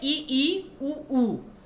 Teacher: मुख बहुत ही कम खुला हुआ है, बिल्कुल ढका हुआ है मुंह, तो ये सारे के सारे आपके संवृत स्वर होते हैं।